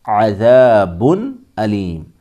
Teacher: حلقی میں سے آ رہا ہے، اس لیے اظہار ہوگا، یعنی غنہ نہیں ہوگا، ناک سے نہیں پڑھیں گے، ظاہر کر کے پڑھیں گے